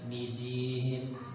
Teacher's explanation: Dal termasuk syiddah, tertahan.